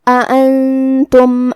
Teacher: کلمت انتم میں یہاں شروعات میں 2 حمزہ ہے، تو ہمیں یہ دونوں حمزہ کو ظاہر کرنا ہے اور اسے حلق کے نیچے والے حصے سے ادا کرنا ہے. پھر یہاں نون ساکن ہے اور اس کے بعد حرف تا ہے.